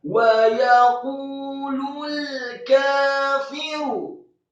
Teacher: qafnya dibaca tebal, marfu atau dhammah 2 harokat karena setelahnya ada wawu sukun